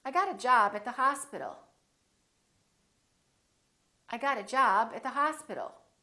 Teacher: Here we're going to stress two words. We're going to stress job and hospital.